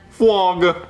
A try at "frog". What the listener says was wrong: No, see, you're saying it wrong. You're saying flog. You gotta say frog. No, there's no W. You're saying flog. You gotta say frog. Frog.